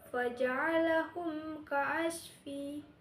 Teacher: Yang pertama itu pada kata faja'alah kaasfi itu hukumnya izhar syafawi. Mim mati bertemu dengan kaf dibaca jelas.